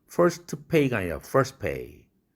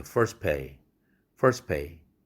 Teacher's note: first라는 단어와 pay라는 단어의 단어 경계가 있고 그런데 바로 앞에 first 할 때 R 사운드가 C1이라면 스는 C2고 트는 C3죠. 이렇게 되면 경계선 바로 앞에 C3인 트가 파열음이니까 생략되죠.